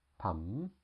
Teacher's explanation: perp and this again come from the English word pump and is pronounced pum also with a skeptical tone